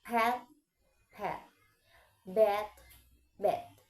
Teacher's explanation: The difference is in voicing. P is voiceless and B is voicing. Challenging, many speakers replace B with P at the end.